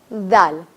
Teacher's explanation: زبان کو باہر نکالنا ہے, دونوں دانتوں کے درمیان پریس کر کے ذال, بہت زیادہ پریس نہیں کرنا, ذال, ٹھیک ہے.